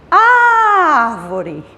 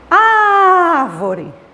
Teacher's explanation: A é a sílaba mais forte, é a sílaba tônica dessa palavra.